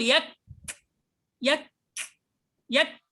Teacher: لاحظ في الكاف والتاء أنه جرى معها النفس فقط، تقول يك يك يك، لكن صوت الكاف انتهى من أول لحظة.